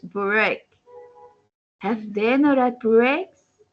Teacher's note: you repeated the statement again but with a rising intonation to show surprise